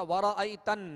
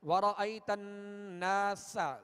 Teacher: نون پر تشدید ہے تو نون میں غنہ کریں گے